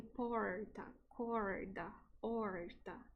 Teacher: algumas regiões do Brasil, como em Minas Gerais, as pessoas falam com o som do Retroflexo, que é esse som parecido do inglês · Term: R retroflexo